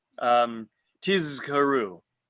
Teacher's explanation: We don't want to say tishakeru with a shin instead of a zayin